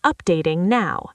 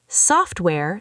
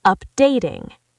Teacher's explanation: Software stress the soft updating stress the day.